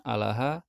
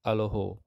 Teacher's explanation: Kalau Suryani Timur, vokal panjang itu lebih cenderung berbunyi A panjang, sementara Suryani Barat lebih cenderung mengucapkannya O.